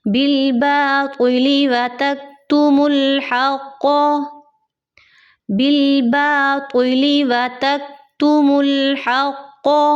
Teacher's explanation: تو کو آپ نے موٹا کرنا ہے، تو اور تا کی آواز میں فرق کرنا ہے. اگر آپ بالباطلی پڑھتے ہیں تو وہ تا کی آواز ہو جائے گی، تو کی آواز نہیں ہوگی.